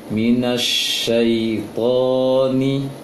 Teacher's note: Ingat, syai tidak panjang, tonya dipanjangkan.